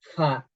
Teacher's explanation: hembusan nafas dan ini Fa ini termasuk sifat yang hams